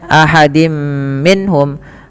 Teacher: tanwinnya dimasukkan ke huruf mim dan ditahan, dan inilah yang kita kenal dengan bacaan idgham bi gunnah, yaitu idghamnya memasukkan surat tanwin kepada mim dan ditahan, diganti bunyinya menjadi bunyi mim, kemudian ditahan dengan 2 harakat.